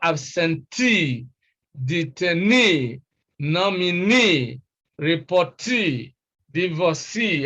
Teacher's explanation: ee that is the long e sound e right e now such words are stressed on the first syllable from the end that is the last syllable